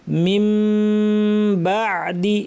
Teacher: মিন বাদি ছিল, নুন সাকিনের পর বা আসলে নিয়ম হচ্ছে ইকলাব করা, অর্থাৎ নুনকে পরিবর্তন করে মিম বানিয়ে পড়তে হবে এবং মিমের গুন্নাটা লম্বা করতে হবে।